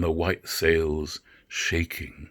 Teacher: he introduces that feminine rhyme with the extra syllable shaking which so perfectly evokes about what the white sail is doing